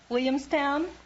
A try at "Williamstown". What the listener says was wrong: What happened to the L's? You knocked the L's out of that word.